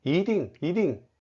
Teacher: To summarize, 一 changes its tone if it is not at the end of a word. It becomes a second tone before a fourth tone